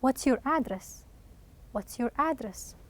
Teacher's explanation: at the end of the question, you will have a falling tone of voice.